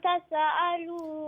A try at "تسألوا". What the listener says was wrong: Not تسألوا. There's no قلقلة. No, no, it's not qalqala.